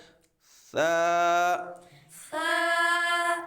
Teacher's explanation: سا کو سے نہیں پڑھنا اور اس پہ سیٹی بھی نہیں لگانی۔ سا حروف لیساویہ ہے، زبان کا سرا اور اوپر کے دانتوں کے اندرونی کنارے سے یہ ادا ہوتا ہے، تو اس پہ سیٹی بھی نہیں لگانی اور اس کو سے بھی نہیں پڑھنا بلکہ کیا پڑھنا ہے؟